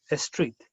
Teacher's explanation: What Spanish speakers usually do is they put an E before the S. So for instance, in saying street, Spanish speakers would usually say a street.